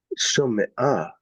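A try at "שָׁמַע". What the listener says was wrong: No, there's no O sound. Sha, split your syllable right here. Sha-ma. In pausal form, it would actually become shama'a, which brings back your original kamatz sounds in the katal. So the point is, why add a little meteg here to help you realize, no, here's the end of the syllable.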